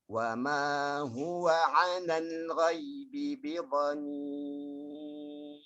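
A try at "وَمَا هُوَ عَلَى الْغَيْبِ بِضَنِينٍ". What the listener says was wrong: Linnya tadi. Alal ghaibi. Lebut di situ.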